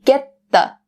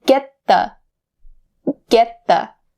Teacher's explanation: So the T here in get is stopped and the word the is more clear.